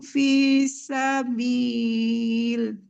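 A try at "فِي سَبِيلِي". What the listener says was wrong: Nggak boleh visabil ya. Visabili. mau dilanjut, mau berhenti, tetap dipanjangkan 2 harok.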